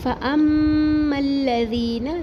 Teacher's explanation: حمزہ کا زبر میم تشدید سے ملا کے پڑھیں گے اور میم تشدید پر غنہ کریں گے ایک الف برابر اور لام تشدید سے ملا کے پڑھیں گے، فَأَمَّا الَّذِينَ ذی